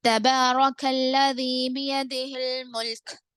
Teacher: اگر ہم وقف کر رہے ہیں تو کاف پہ جزم دے کر سانس توڑیں گے.